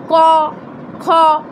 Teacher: ক এর পর অ আছে, সেই স্বরধ্বনি উচ্চারিত হচ্ছে।